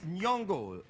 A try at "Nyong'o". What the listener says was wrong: Well, it's a soft G, Nyong'o.